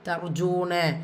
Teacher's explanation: ரா சுக்கூனுக்கு முன்னாடி இருக்கிற லெட்டரில் ஃபத்ஹா வந்திருக்கிறதுனால அந்த ரா சுக்கூனை நீங்கள் வல்லினப்படுத்தி ஓதணும். ஜூ வாவ் மத்தா 2 ஹரக்கத்தில் நீட்டம் கொடுக்கணும்.